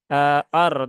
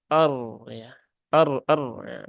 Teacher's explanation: rnya harus tebal ya harus tafkhim karena dia berhubungan dengan fathah ya er ya bukan eh tapi er ya er er begitu